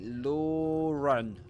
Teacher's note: you'll hear a ra, small ra, called technically as intrusive ra